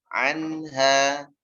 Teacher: kemudian mimnya dialirkan sedikit, baru masuk ke ain. Wa ma hum an, ya, biar tidak mantul. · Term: mimnya ngalir